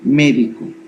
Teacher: Esdrújulas. Lleva la sílaba tónica en la antepenúltima sílaba.